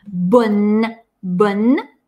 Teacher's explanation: Хорошее «н». Здесь нет носового. Нам обязательно нужно впечатать эту «н».